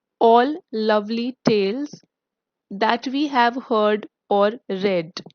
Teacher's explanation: Love, stressed, and the later part unstressed